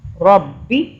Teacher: با کی 2 مرتبہ آواز، ایک با کی ساکن پچھلے را سے ملے گی زبر کے ساتھ، اور دوسری با کی آواز زیر کے ساتھ